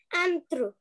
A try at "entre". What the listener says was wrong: Entre, very good.